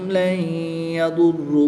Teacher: نون ساکن کے بعد یا حروف یرملون میں سے ہے تو یہاں پر ادغام مع الغنہ ہوگا، غنہ کر کے پڑھیں گے